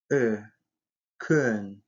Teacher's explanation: Мягкий, губной. При произнесении этого звука губы вытягиваются вперед и слегка округляются. Язык слегка продвигается вперед.